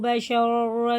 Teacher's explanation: یہ بڑا شین، جب ہم اسے پڑھتے ہیں تو منہ میں شور ہوتا ہے، سیٹی سی بجتی ہے